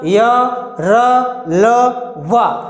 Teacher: या और वा को अर्धस्वर, रा को लुंठित या प्रकंपित व्यंजन, ला को पार्श्विक व्यंजन कहते हैं। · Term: अंतस्थ व्यंजन